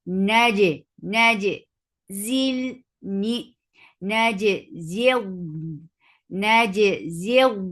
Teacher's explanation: Naji, and for fatha and jaws attached jim, jim will get sifa of qalqala, and it has shadda. No flow of sound should be there.